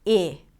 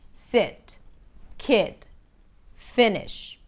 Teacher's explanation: The lax I happens where you drop your jaw a little bit, the tongue lowers, and the lips relax. I. It's more open.